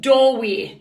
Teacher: we stress both syllables in doorway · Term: two stressed syllables, spondaic